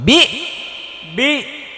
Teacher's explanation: একদম সাউন্ডটা একদম স্টপ করে দিতে হবে হামজা দিতে হবে বি একদম কোন সাউন্ড হবে না বা হামজা জের বি বা